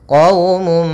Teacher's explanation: maka caranya adalah masukkan suara mimnya Maaf suara munnya kepada mim sehingga hilang suara nunnya masuk kepada mim quumum sambil ditahan mnya karena di sini gunum musrifu Kemudian pada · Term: Idam bhunah